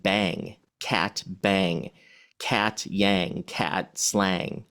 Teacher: So cat would rhyme with rang. So we're taking the a and then we're putting a nasal, the NG sound there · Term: assonance rhyme